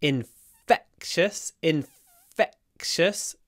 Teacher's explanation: Remember that the e is stressed, but it's clipped between the f and the k.